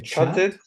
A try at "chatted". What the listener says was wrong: Bravo.